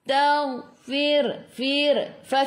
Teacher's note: gigi atas menyentuh perut bibir bawah. Sebelum ra ada baris bawah kena baca dengan nipis.